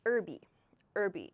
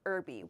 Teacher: In American English, we say herby. We do not pronounce this H at the beginning.